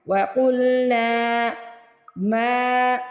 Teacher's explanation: میم کے آگے الف ہے، میم کو کھینچ کے ادا کرے